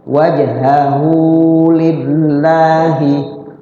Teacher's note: Wajhahu nya di situ adalah mad silah qasira, dibaca panjang tapi jangan panjang-panjang, ya, sekedar ukuran mad tabi'i.